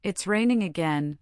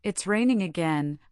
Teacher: If I say it's raining again with a flat low tone, I sound tired or perhaps disappointed. But if I say it's raining again with a bright rising tone, I sound excited or happy.